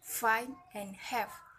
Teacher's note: udara didorong melalui Gigi atas dan bibir bawah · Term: labiodental